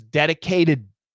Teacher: that t becomes a flat t and it says dedicated and that ending D and the next · The word dedicate, but with a D, dedicated to. So what we have here is the dedicate, that T becomes a flap T.